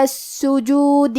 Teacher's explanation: کلمت السجود میں سین پہ تشدید ہے لہذا ہمیں یہ حرف کو 2 حرف کے برابر پڑھنا ہے